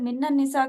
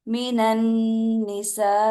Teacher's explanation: ہے، ہوتا کیسے ہے، غنہ یہ ہوتا ہے کہ آپ نے نون اور میم کی ساؤنڈ کو جو ہے کہاں لے کر جانا ہوتا ہے، ناک میں لے کر جانا ہوتا ہے، اور ایک الف کے برابر اس کو لمبا کرنا ہوتا ہے